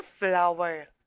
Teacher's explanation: when blended together they will have the initial consonant blend fl the two consonants are blended together but you can still hear the individual sounds of f and l